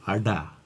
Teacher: The first sound, arda, is made with the tongue hitting the roof of the mouth, going up straight and back down again, whereas arda, the retroflex sound, is with a ballistic gesture, with this forward-moving gesture